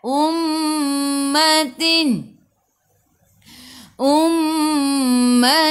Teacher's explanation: Mim ada sabdu tekan ke dalam mim dan dengung dua harakat